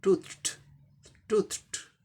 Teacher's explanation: अब इसका उच्चारण देख लीजिए, ट होगा, टी का ट, ओ का ऊ, लॉन्ग ऊ, टू, टी एच का थ, टूथ हो गया, थ वॉइसलेस है, इसीलिए ईडी का उच्चारण टी होगा